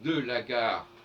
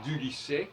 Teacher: de la gare, on entend le L, du lycée, il n'y a pas de L.